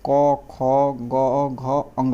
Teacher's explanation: कंठ से हम लोग बोलते हैं क वर्ग में